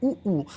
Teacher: तो ये दोनों ओंठ आपस में चिपक रहे हैं ना, तो ये किससे किससे बोला जाता है, ये ओठ से बोला जाता है। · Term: ओष्ठ